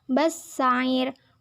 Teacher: Bassair merupakan hukum bacaan alif lam samsiah karena huruf alif lam bertemu huruf samsiah sin, dibaca idgham masuk ke huruf sin. Bassair merupakan hukum bacaan mat arid li sukun karena huruf mat jatuh sebelum huruf yang diwakafkan.